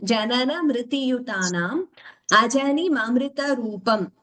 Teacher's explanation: that rikara should be heard as rikara and not as ukara